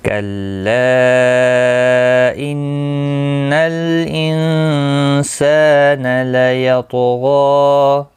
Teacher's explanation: نون مشدد پر گنہ ہوگا